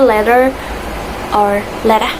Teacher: When the T sound is flipped, it'll sound a lot more like a soft D sound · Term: flapping